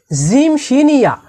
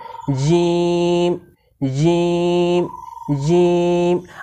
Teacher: জিহ্বার মাঝখান বা জিহ্বার মধ্যখানকে উপরের তালুর সঙ্গে লাগিয়ে জিম শিনিয়া উচ্চারিত হয়। তো আমরা সংক্ষেপে বলতে পারি যে জিম শিনিয়াকে জিহ্বার মাঝখান থেকে পড়তে হয়।